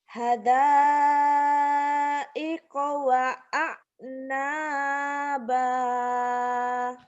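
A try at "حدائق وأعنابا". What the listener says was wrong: Ainnya yang kurang mantap ya. Hamzahnya udah nih. Latihan ain itu tiap pagi itu ada nasi sedikit ditelen ya. Nelen nasi. Atau nelen ludah. Itu ya. Ainnya belum keluar, belum mantep.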